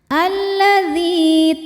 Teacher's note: Karena ada ya sukun sebelumnya kasrah maka dzal panjang dua harakat · Karena alif lam menghadapi huruf syamsiyah yaitu lam. Maka alif lam tidak dibaca. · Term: mad thobbii zohiri, alif lam syamsiyah